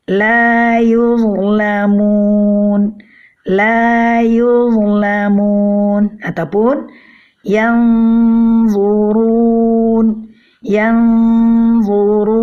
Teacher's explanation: Ini semua adalah karena perbedaan sifat dari huruf-huruf po, shad dan dha ini, di mana ketiga huruf ini mempunyai sifat isti'la atau sifat tebal. Jadi ketika kita mengucapkannya, pangkal lidah kita akan terangkat atau naik.